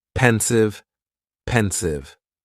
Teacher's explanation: And the pronunciation is very easy. Just two syllables and the stress is on that first syllable.